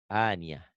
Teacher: Tak marbutoh jika dihentikan jadi aniyah. Jangan aniat, jangan ada T. T-nya hilang. Aniyah, itu tak marbutoh.